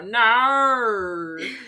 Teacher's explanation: the Australians have to like bring it down to just saying like one syllable